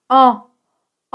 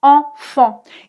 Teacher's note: Tu vas garder la bouche ouverte, tu ne vas pas la fermer complètement, mais l'air va surtout passer par le nez et un peu par la bouche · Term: le son en